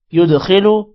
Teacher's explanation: دال پر قلقلہ ہوگا, خو موٹا ہوگا, خو کو لمبا نہیں کرنا, لام کو بھی لمبا نہیں کرنا.